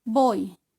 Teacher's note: No boi, eu tenho a vogal O e a semivogal I.